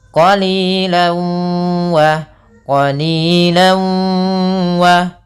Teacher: tanwin yang dimasukkan ke huruf waw, sehingga suara tanwinnya atau suara an-nya hilang. Maka langsung ke wa. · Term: idgham bi gunnah